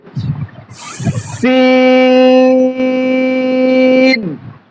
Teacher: হরফটা পাতলা হবে এবং বাতাস জারি থাকবে। এটা হচ্ছে আবার হামসের হরফ।